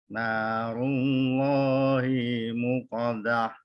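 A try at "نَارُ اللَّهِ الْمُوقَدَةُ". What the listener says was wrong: Hil ada lamnya. Narullahil ada lam. Hil. Mu ada wawu panjang. Muqadah. Mu ada wawunya.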